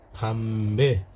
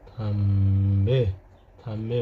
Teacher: द शब्दको सुरुमा आएमा यसको उच्चारण थ हुन्छ साथीहरु अब द मात्र हैन यसको उच्चारण थ पनि हुदो रहेछ।